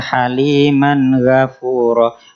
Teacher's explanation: bukan ga tapi go, tebal, tafkhim. Man go izhar, satu harokat saja.